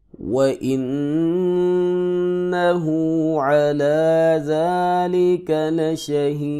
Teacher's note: لام کے اوپر زبر ہے، اس کو لمبا نہیں کریں گے، اکثر لوگ یہاں پہ لمبا کرتے ہیں